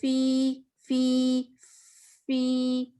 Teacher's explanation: ہم یوزلی فا کے اندر ایک بریتھ ساؤنڈ ہوتی ہے, جس کو ہمس کہتے ہیں. ہمس بریتھ کی ساؤنڈ کو کہتے ہیں, بلکہ سرگوشی کو بھی کہتے ہیں.